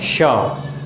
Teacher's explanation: तालु की सहायता से बोला गया तो तालव्य श। जैसे देखिए, मैं बोलूँगा श, ये तालव्य श हो गया।